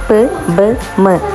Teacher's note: Sounds produced with both lips, such as p, b, m. ഈ സൗണ്ട്സിനെയാണ് ബൈലേബിയൽ എന്നറിയപ്പെടുന്നത്. · രണ്ട് ലിപ്സാണ് main articulators ആയിട്ട് വർക്ക് ചെയ്യുന്നത് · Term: bilabial